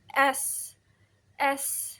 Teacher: konsonan gesek alveolar. Nah, artikulatornya itu aliran udara melalui celah sempit antara lidah dan gusi. S. Nah, ini tuh contoh voiceless atau tak bersuara ya karena ee pita suara kita tuh enggak bergetar.